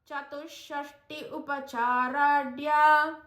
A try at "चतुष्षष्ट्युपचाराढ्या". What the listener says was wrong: So you have to say it as Chatushashtyupa. It is a sandhi there. Chatushashtyupacharadhya.